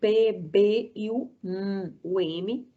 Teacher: Então, por exemplo, um som bilabial, nós temos o toque, né? O encontro do lábio superior com o lábio inferior.